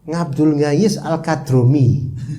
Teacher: orang Jawa Ain susah Ain Ain itu jadi nga